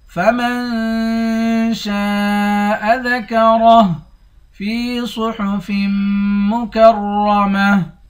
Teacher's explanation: فی صحف، فا کو یا کے ساتھ ملا کر 1 الف کے مقدار کھینچیں گے، یا حروف مدہ ہے۔ صاد کو موٹا پڑھیں گے، فا کو میم کے ساتھ ملا کر میم پر غنہ کریں گے، آخر میں را ہے، را کو موٹا پڑھیں گے، آخر میں گولتا ہے، گولتا پر جب وقف کریں گے گولتا ہاں بن جائے گی۔ · شین کے بعد الف ہے، اس الف پر مد ہے، اس مد کو 5 الف کے مقدار کھینچ کر پڑھتے ہیں۔ را کو موٹا پڑھیں گے، آخر میں ہاں ہے، ہاں کو ساکن کر دیں گے۔